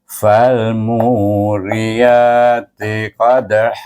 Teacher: tetapi kita tak boleh baca han, kita baca ha. Sama juga ditukarkan baris 2 kepada baris 1, sebab selepas tanwin tu ada alif di sana. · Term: mad iwad